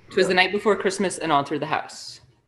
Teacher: anapestic meter using a weak weak strong pattern